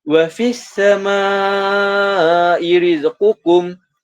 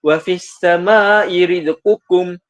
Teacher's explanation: Okey, kita baca sebanyak 4 ataupun 5 harakat. Kita tak boleh baca pendek 2 harakat. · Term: mad wajib mutasil